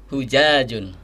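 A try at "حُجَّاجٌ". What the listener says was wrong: Depannya, huruf depannya itu ha. Dan ha itu ada di tenggorokan bagian tengah ya, berasa kita ha. Jadi bukan ha, kalau ha di bawah ha, tapi ha di tengah nih. Jadi berasa hujajun ya.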